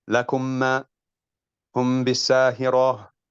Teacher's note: shortening the duration of the gunna when it is merged or concealed